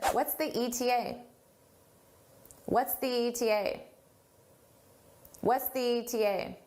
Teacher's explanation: we do a more stressed the when the next word starts in a vowel.